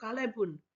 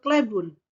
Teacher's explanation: Untuk yang Sumeneb itu terdiri atas 3 silabel, ya. Tetapi ketika di Bangkalan menjadi 2 silabel. Ada penghilangan bunyi A, begitu ya, bunyi A yang di Bangkalan, misalnya tadi taretan dan kalebun menjadi tretan dan klebun.